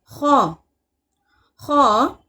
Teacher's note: हलक के ऊपरी हिस्से से अदा होता है